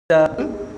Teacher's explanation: shin ini dia berada di tengah-tengah lidah, diangkat ke langit-langit keras di atas. Asya, tengah-tengah lidah tu kan, dia terangkat.